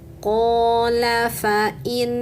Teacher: nunnya bertasydid. Tahan dan dengungkan tiga harakat.